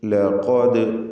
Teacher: ലഖദ് ഖാഫിന് തഫ്ഖീമുണ്ട്, ദാലിന് സുക്കൂൻ നൽകി ഉച്ചരിക്കുകയാണ് ഖൽഖല സുഗ്റ